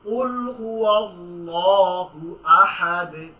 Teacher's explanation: আজকে এতটুকু জেনে রাখেন যে আল্লাহটা মোটা করে পড়তে হবে।